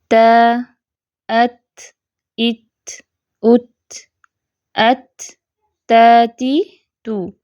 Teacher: देख लेते हैं ता की अदायगी में रसुल लिसान यानी कि जुबान की जो नोक है नरमी से सनाया उलिया की जड़ों को लगती है यानी वह टच करती है हिट नहीं करती टकराती नहीं है